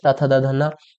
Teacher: दंत में त थ द ध न ये दंत हो जाएगा।